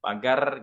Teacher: kesalahan yang kedua adalah ro-nya terlalu banyak getarannya. Ini seperti bacaan orang bahasa Indonesia ya, ketika kita berbahasa Indonesia gitu ya, pagar gitu kan, seperti itu. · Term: ro yang terlalu bergetar